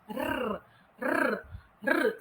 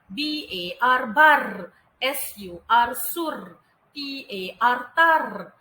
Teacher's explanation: Awak akan menyebut suku kata KVK R dengan menggetarkan sahaja lidah awak. R, r, r. Kalau tak boleh getar, tak apa.